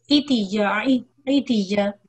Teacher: عتيا کسرہ ہے اور اس کو تھوڑا سا لمبا کریں گے